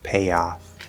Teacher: we're going to sort of peel the tongue down so we kind of hit that Y sound very lightly, not fully up in the position. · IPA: /j/